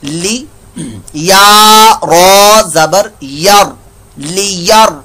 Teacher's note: तो सबक नंबर 16 समझिए रा साकिन के बारे में, साकिन यानी कि रा को कब पूर्ण करना है और कब बारीक करना है, सबक नंबर 16 के अंदर बताया। रा साकिन से पहले जबर है तो ये पुर मोटा पड़ा जाएगा